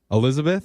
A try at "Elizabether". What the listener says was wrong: Hi, it's actually Elizabether. It's just Elizabeth, and then you add an ER.